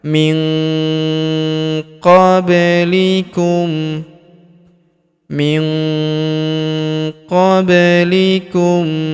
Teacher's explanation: Khalau matsalulladzina khalau min huruf nun sukun bertemu huruf qo maka nun sukunnya melebur ke huruf qo kita baca dengung dan samar dengungnya kita tahan dua sampai harakat min qoblikum min qoblikum Huruf ba berharakat sukun kita pantulkan atau kita qalqalahkan. · Huruf ba berharokat sukun kita pantulkan atau kita qalqalahkan.